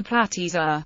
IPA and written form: ˌplætɨˈzoʊ.ə (Platyzoa)